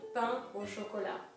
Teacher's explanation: There's a T at the end of chocolat, but you don't pronounce it. And pain is the nasal sound, same as in vin, wine